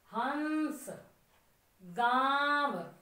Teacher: आ, नाक से आई आवाज, ख मुंह से आ गई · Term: अनुनासिक